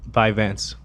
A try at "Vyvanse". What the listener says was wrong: There's no B in it, but I swear everybody that says it is saying Vyvanse. Vyvanse. Vance.